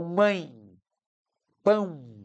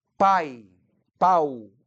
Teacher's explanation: Ele marca a sílaba forte e ele dá um som nasal Então mãe pão é nasal pai pau é oral